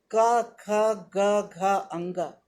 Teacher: ये कंठव्य कहे गए हैं क्योंकि हम इसे कंठ से बोलते हैं।